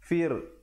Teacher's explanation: fa baris bawah bertemu ra dan dibacakan wajah ra-nya dengan nipis